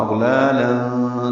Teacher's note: لام باریک ہیں دونوں لام · پہلے لام پر کھڑا زبر قائم مقام مد اصلی، 2 حرکات لمبا کریں گے، منہ کھولیں گے. اور دوسرے لام پر تنوین ہے، اس کے بعد فا آنے کی وجہ سے اخفا ہوگا.